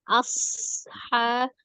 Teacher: Nah, jangan lupa di situ ada huruf shad sukun ya. Ada asofir, desisan di huruf shad itu.